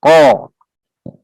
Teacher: makhrajnya pangkal lidah bagian dalam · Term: huruf qaf